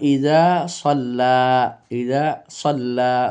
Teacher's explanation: লাম মোটা হবে না লাম শুধু লফজে জালালাতে আল্লাহ শব্দ গিয়ে মোটা হয়